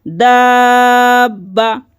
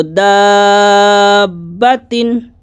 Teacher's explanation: اگر گولتا پر سانس کو توڑیں گے، وقف کریں گے، تو پڑھیں گے وہ ہا میں کنورٹ ہو جاتی ہے۔